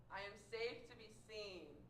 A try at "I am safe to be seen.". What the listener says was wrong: Send it out right here. Send it out of this forehead, right there. Imagine that the sound of your voice is coming out the center of your forehead. Your voice is just sinking back in the lazy mud voice.